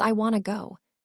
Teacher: The want and to merge together.